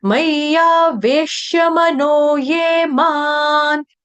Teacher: म के ऊपर जो अनुस्वार यानी कि बिंदी उसका उच्चारण करेंगे हम हम हलंत न के साथ क्यों करेंगे क्योंकि आ गया आपका न वर्ण से शुरू होने